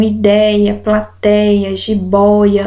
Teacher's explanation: os ditongos abertos ou seja que tem esse som de Ei e de Oi